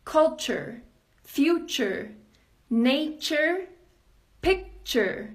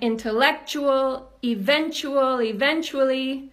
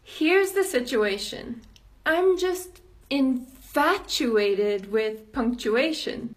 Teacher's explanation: If you're like so many of my students, there's a really good chance that you're pronouncing them wrong. In all of these words, and so many others, the T-U becomes a ch sound.